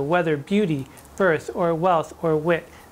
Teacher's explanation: nice little th's and the b's and the t's which are sort of light percussives in the sequence in which they occur the w is also